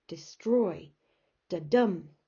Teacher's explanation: The second part of that word, the destroy bit, is the stressed bit. It's the exaggerated bit.